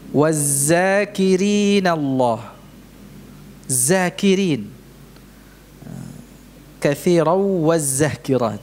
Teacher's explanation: Jadi mengganti huruf dzal dengan zai.